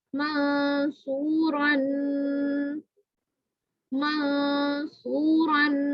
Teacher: منصورا, منصورا, یعنی نون کی آواز نکلے گی لیکن کیا ہوگا, نون کے مخرج سے زبان کی نوک ٹچ نہیں کرے گی, اس سے پیچھے پیچھے رہے گی اور ناک سے غنہ کریں گے ایک الف کے برابر. منصورا, سو کو میں نے کیوں لمبا کیا, کیونکہ اس کے ساتھ کیا ہے, واو مدہ ہے. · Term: اخفا